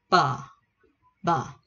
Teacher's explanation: Bặm môi bật ra nha các bạn